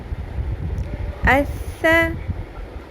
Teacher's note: نرمی سے ادا کرنا ہے، ثا ہے، اس، سیٹی کی آواز بالکل بھی نہ آئے۔